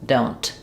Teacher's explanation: you're going to hear both the N and the T. Don't. Um, but when I'm saying don't look, because that T is followed by the consonant sound, you're probably going to have an unreleased T. · If I'm saying the word don't by itself, you're going to hear both the N and the T